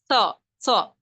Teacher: یہ زبان کی نوک ہمارے اوپر کے 2 دانتوں میں لگے گی